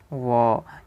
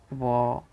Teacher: ये दंत और ओष्ठ दोनों मिल कर करके इसका उच्चारित करने में मदद करते हैं। व, तो इसे हम दंतोष्ठ कहेंगे, दंतोष्ठ वर्ण कहेंगे।